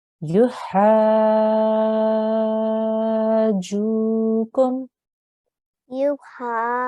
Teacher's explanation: even though we are elongating the sound, we need to join the ha to the jim